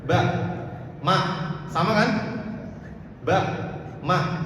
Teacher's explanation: ba dan mim ini makhrajnya di syafatain, di dua bibir.